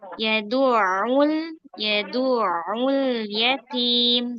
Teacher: Huruf ain ayat kedua, nah itu jangan tebal. Dal dan ainnya jangan tebal.